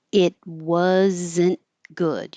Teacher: You won't hear the T in it, and you won't hear the D in good. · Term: stop consonants